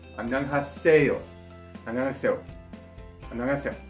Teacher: when the se runs into the yo, it kind of sounds like you're saying say yo, and that's because the e plus e sound is how you get the a sound.